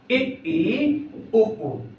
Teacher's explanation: इन स्वरों के उच्चारण में मुख द्वार लगभग पूरा बंद रहता बंद लगभग बंद रहता पूरा बंद नहीं होता क्योंकि अगर हम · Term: सम्र स्वर